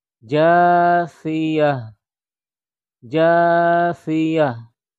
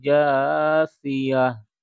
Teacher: tak marbutoh kalau diberhentikan menjadi huruf ha sukun, ya. Jadi tidak berbunyi tan, tapi haknya hak sukun atau hak mati.